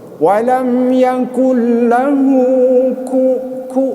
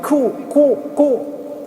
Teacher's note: makhraj hurufnya tadi aksal lisani asfal. Jadi sebelah depan daripada huruf qaf, makhraj kaf tersebut. Walam yakul lahu ku, bukan ku ya, tapi ku.